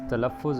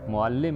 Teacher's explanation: معلم میں لام مشدد ہے اور بولتے وقت اسے 2 بار ادا کیا جاتا ہے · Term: تشدید